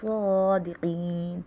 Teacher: صادقین میں کھڑا زبر ہے، ایک الف کی مقدار کھینچیں گے، قین میں یا مدہ ہو رہی ہے، ایک الف کی مقدار کھینچیں گے۔